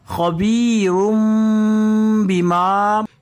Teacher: نون ساکن کے بعد حرف با آ رہا ہے تو یہاں پر ہم نون کو چھوڑ دیں گے، ڈائریکٹ میم کو پڑھیں گے. تو یہاں پر نون ساکن کا اقلاب ہو رہا ہے.